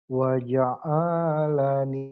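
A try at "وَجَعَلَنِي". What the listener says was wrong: pendek, ujungnya doang yang panjang. Waja'alani.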